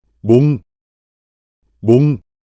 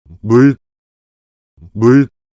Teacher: when pronouncing the Korean consonant mium, we create sound by separating the lips after sticking them together. This method is different from the way the English consonant m is pronounced, which blocks the airflow from the mouth with both lips to make it exit through the nose. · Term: initial consonant mium